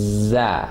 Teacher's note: زبان کی نوک سامنے کے نیچے والے دو دانت ثنایا سفلا, ان کے ایجز کے ساتھ لگتے ہوئے اوپر کے بھی دانتوں سے ٹچ ہوتی ہے. یہ اس کا صحیح مخرج ہے.